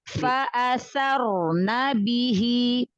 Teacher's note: Bi-nya tambahkan lagi syiddah jaharnya.